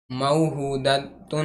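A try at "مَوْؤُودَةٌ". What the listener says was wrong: हमजा है, हमजा ऊ।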